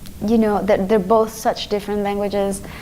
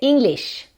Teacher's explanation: el fonema de la I corta en inglés, que es E. Es algo así entre I y E en español